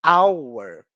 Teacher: a grafia dela é com a consoante H, porém, nesse caso, o H não é pronunciado. Ou seja, o primeiro som, hour, esse som de A, é um som vocálico.